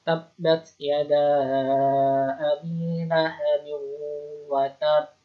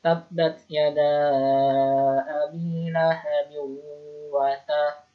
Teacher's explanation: Jadi menekan kuat makhrajnya seperti membaca tasdid ketika wasal, kemudian setelah itu baru dipantulkan atau diqalqalahkan.